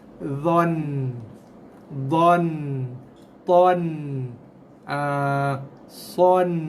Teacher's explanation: Hujung lidah sentuh gusi atas gigi, bukan sentuh belakang gigi, atas dia. Okey? Itu makhrajnya. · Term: makhraj nun